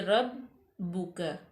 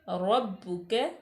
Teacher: را مفتوح ہو تو را پر پڑی جاتی ہے، یعنی کہ پر موٹی پڑی جاتی ہے